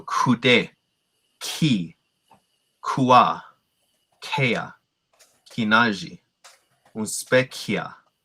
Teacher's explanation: are examples of of aspirated sounds with h so here uh these are all going to be breathy sounding